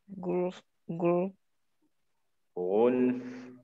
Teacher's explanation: انزل الى ترقيق ورخاوه الفاء